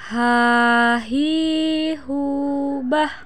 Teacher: Huruf ini keluar dari tenggorokan yang terjauh. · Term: huruf H